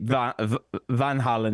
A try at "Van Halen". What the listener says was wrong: Well, I think you're a little long on that first O. Let's go, and this is the proper pronunciation. Van Halen.